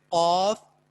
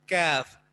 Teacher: تو قاف میں زبان بالکل اس کوے کے ساتھ ملتی ہے اور کاف میں تھوڑا سا آگے منہ کی طرف اوپر تالو سے ٹچ ہوتی ہے